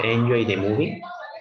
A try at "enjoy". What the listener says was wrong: Aquí la fuerza de voz de este verbo está al final, no al principio, ¿ok? No sería enjoy, sino enjoy.